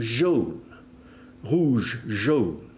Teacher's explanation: in French it ends in a voiced fricative